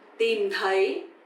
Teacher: tìm is dấu huyền, you have to go down, and thấy, dấu sắc, you have to go up.